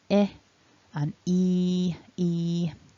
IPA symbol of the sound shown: ɪ